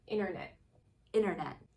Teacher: The first T is completely dropped. The second one is held T, which means that you do bring the tip of your tongue onto the alveolar ridge, but you don't release it. You keep it there.